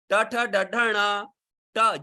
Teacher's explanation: ट जीभ को ऊपर फेंकना पड़ता है, जीभ ऊपर चली जाती है, इसका नाम है मूर्धा, तो ये मूर्धा से बोले जाते हैं।